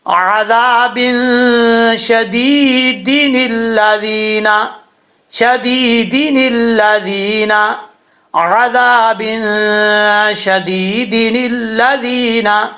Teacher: اور نون قطنی ہمیشہ اس کو زیر دے کے پڑھتے ہیں ، زبر یا پیش نون قطنی کو نہیں دے کے پڑھتے،